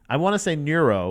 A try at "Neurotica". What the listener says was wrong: You're adding like 3 U's to it. Yeah, neurotica. That's how you spell neurotic. Yeah, dude, neurotic spelled N-E.